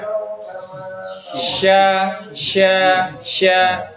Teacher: Yang titiknya tiga, shin, tengah lidah. Sha, sha, sha, tengah lidah.